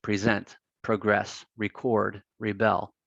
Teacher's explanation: anytime these are used as verbs, the stress is on the second syllable